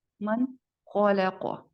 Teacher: یہاں پر حروف الحلق موجود ہے تو ہم اس کو پوری طرح نون کو واضح کر کے ادا کریں گے